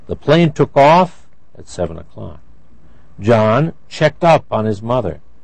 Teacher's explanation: in most of these verbs the second word receives the stress